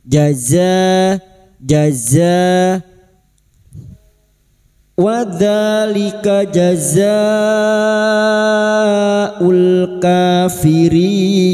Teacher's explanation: jim makhrajnya ada pada tengah lidah wastul lisan